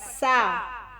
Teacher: یہ سواد نہیں ہے سین ہے تو پتلا پڑھنا